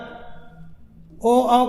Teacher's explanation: ओ औ का जो होता है ये कंठ और ओठ से होता है।